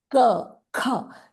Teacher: your origin is guttural. It's from the throat, and that's where that sound is produced.